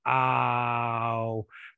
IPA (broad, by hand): aw